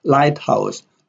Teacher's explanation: Lighthouse, light has a primary stress, and house has a secondary stress.